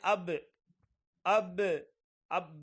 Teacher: با یعنی دونوں ہونٹوں کے تر ہونٹ سے، گیلے ہونٹ سے با ادا ہو رہے ہیں، تو یہ مخرج ہے۔